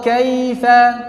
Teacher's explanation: Bukan jadi o buat waw, bukan jadi e buat iya.